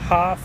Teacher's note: and we have pronounced which is a mouth position of the top teeth biting the bottom lip but with F pronounced with more air and no use of the voice box